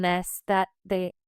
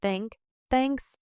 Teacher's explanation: For the voice teach sound, your vocal cords vibrate while your tongue is between your teeth. For the unvoiced teach sound, your vocal cords do not vibrate. Put your tongue lightly between your teeth and practice this with vibration.